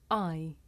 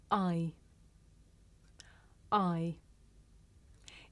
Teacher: the shape the mouth makes changes from the beginning of the sound to the end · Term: double vowel sound